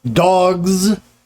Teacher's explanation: you should feel the vibration it's voiced and the z is also voiced